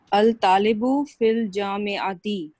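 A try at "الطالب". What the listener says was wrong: पहले बताइए, ये अल तालिबु है या अत तालिबु है? जी शमसी है ये, ठीक है ना, सन लेटर है जी, सन लेटर है जी,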